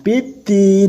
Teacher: Mad arid lisukun yaitu membaca sepanjang 2 sampai 5 harokat. Huruf berharokat fathah yang diikuti alif, kasroh diikuti ya sukun, dan domah diikuti wawu sukun, yang kemudian bertemu huruf yang diwakofkan.